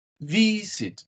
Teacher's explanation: The stress is in the first syllable.